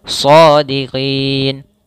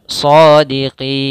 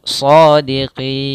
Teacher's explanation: Maka kita namakan dengan mad arid disukun. Panjangnya boleh 2 harakat, boleh 4 harakat, boleh 6 harakat.